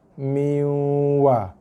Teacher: Boleh masukkan bacaan, skip huruf nun, terus masuk ke dalam huruf waw. Kemudian berserta dengan kadar dengung 2 harakat sekurang-kurangnya. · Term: hukum idgham